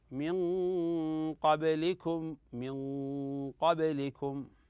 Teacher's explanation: هنا نون ساكنه اتبعد القاف والقاف من حروف الاخفاء الحقيقي